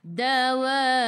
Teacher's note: Dan ra kena baca dengan nipis sebab sebelumnya baris bawah.